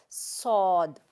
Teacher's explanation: सौद थोड़ी सी मोटी आवाज़, इसको मुंह को भरेंगे हम, भर के भारी आवाज़ के साथ पढ़ेंगे सौद